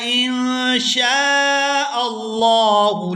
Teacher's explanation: لام کو کھینچ کر ادا کریں گے کیونکہ لفظی اللہ کے لام سے پہلے زبر ہے